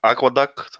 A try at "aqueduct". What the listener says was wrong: Aqueduct. Oh, there's a T on the end. Aqueduct. First syllable.